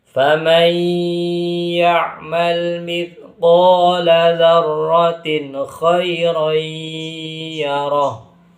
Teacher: Jadi nun matinya atau nun sukunnya dimasukkan ke huruf ya lalu disertai dengan dengungan atau ghunah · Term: idgham bighunah